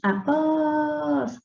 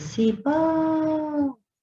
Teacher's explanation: Após, a última é tônica. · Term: oxítona